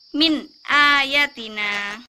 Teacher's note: ada nun sukun bertemu dengan hamzah Jadi dibacanya jelas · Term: izhar